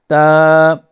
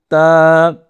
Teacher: اگلا حرف دیکھیے، اس کے اوپر 2 نقطے ہیں، اسے کہتے ہیں تا۔ زبان کی نوک کو اوپر کے دانتوں کی جڑ سے لگائیں اور پیار سے بولیں تا۔